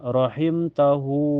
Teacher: wu dipanjangkan dua harakat ya karena menjadi masilah qosir karena hair terhempit dua huruf hidup sebelum dan setelahnya.